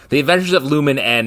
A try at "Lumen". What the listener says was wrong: No, you don't say Lumen N. You just say The Adventures of Lumen. Yeah, that's you don't have to pronounce one N. Two N's right next to each other. you just say Lumen.